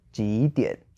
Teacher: And the second one is 几点, which means when or at what time. And two third tones again, so 几点. And if we put it together, it flows exactly the same.